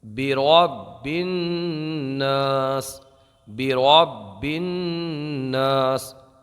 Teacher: اس کے آگے اگر ہم چلتے ہیں تو یہاں پر آپ دیکھیے یہ جو را ہے، را، تو اس را کو ہم پر پڑھیں گے، برب الناس، برب الناس۔ با کو جماؤں کے ساتھ پڑھیں گے، اس لیے کہ جب حروف قلقلہ مشدد ہوں تو انہیں جماؤں کے ساتھ ادا کریں۔ اس کے آگے یہاں پر نون پر جو ہے نا تشدید ہے، اور قاعدہ ہم نے یہ پڑھا کہ نون مشدد اور میم مشدد میں ہمیشہ گنہ ہوتا ہے، گننے کو ایک الف کے برابر کھینچ کر پڑھا جاتا ہے، یعنی گننے میں روکا جاتا ہے۔